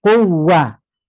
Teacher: Biquwa untuk waw pertama itu tidak ditahan, hanya ditekan 2 harokat. Quwa dan tidak masuk hidung. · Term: waw tasdid pertama